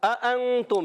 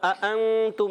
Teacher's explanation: حرف اخفا میں سے اخفا کا قاعدہ ہوگا، یعنی غنہ کریں گے، نون کو چھپا کر ادا کریں گے، ایک الف کا غنہ ہوگا